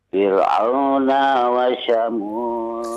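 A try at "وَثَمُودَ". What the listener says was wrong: Huruf sa. Fir'auna wa Samud. Huruf sa. Bukan shin. Sa. Sa. Ya, sa. Wa Samud. Sa.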